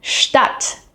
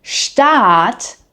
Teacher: the word Stadt, as in city, has a short A. Now, the word Staat, meaning state, has a long A.